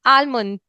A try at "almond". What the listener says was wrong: Now here, L is not pronounced. It